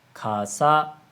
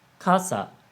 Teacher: it has a different pitch pattern I said Casa low high which is a different word from Casa Hi Lo